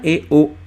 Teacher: ना ज़्यादा मुंह खोलता है ना कम मुंह खोलता है, ठीक है। तो यहाँ मैं ये समझाना चाह रहा हूँ आपको कि वो अर्धसंवृत के अंतर्गत आ रहा है, मतलब वो उसका मुंह कम बंद रहता है, ठीक है।